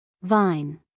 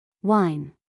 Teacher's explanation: The sound V uses the lower lip touching the upper teeth. The sound W uses rounded lips and no teeth.